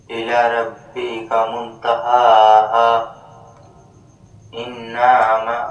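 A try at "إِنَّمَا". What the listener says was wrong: نون کو نہیں کھینچیں گے، انما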